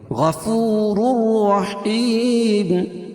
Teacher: ادغام کریں گے لیکن غنہ نہیں کریں گے غفور الرحیم اور دوسری رائے مشددہ کے اوپر زبر ہے تو را پور پڑھی جائے گی یعنی دونوں را پور پڑھیں گے